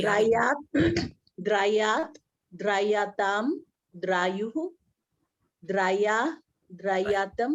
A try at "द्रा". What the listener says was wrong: नहीं, एक मिनट, आप द्राई क्यों कर रहे हैं? द्रा करिए, द्रा।